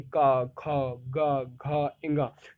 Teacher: कंठ से आवाज निकलती है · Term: कंठ व्यंजन